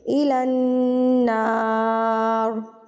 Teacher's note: نون کے اوپر زبر تھی تو اس وجہ سے را کو ہم پر یعنی کہ موٹا پڑھیں گے